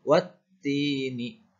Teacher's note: Bunyinya wa langsung dihubungkan ke huruf ta bertasydid, dibaca wattini.